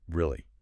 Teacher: Lots of upward movement. Very bright. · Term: high-pitched surprise